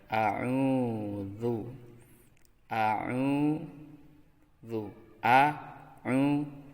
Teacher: Kemudian yang berikutnya ain, berbaris dhammah, kemudian setelahnya ada waw, maka dibaca panjang dua harakat